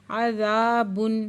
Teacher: عذاب، با پہ الف مد ہے، 2 حرکت کھینچ کے پڑھیں گے۔